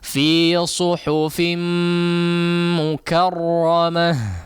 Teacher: mim di sini sebetulnya idgham ya, tidak bertasydid aslinya, tapi untuk memudahkan dalam membaca ya maka ditasydidkan. Artinya digunnahkan dengan gunnah yang panjang.